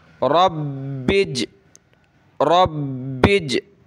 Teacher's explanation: ٹھیک ہے، را با کے ساتھ ملے گا اور با کو جیم کے ساتھ ملانا ہے. با پہ ہم نے سختی کرنی ہے تشدید کی وجہ سے، جیم پہ ہم نے قلقلہ کرنا ہے